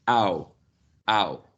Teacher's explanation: you start from low central position and the tongue glides upwards to a new position which is high still central · your tongue probably is not moving towards your teeth, but it's just going upwards. It's just rising within the oral cavity. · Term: closing diphthong, diphthong